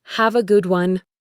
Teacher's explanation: The sounds have a links to become hava.